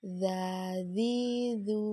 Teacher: menyentuhkan ujung lidah kita dengan dinding dua gigi di bagian atas suara mengalir dengan lembut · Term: huruf dza, huruf za